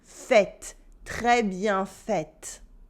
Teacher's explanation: the adjective gets an extra E at the end, which makes the T stop being silent